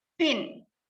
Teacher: when we pronounce pin there's an air comes out from our mouth